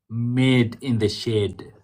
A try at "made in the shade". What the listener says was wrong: You're enunciating the made too much. So come down from the made to made. Made in the shade.